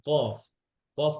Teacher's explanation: খেয়াল করেন যে কফ কফ করতে করতে জিব্বার গোড়া থেকে হ্যাঁ আকসাল লিসান জিব্বার গোড়া থেকে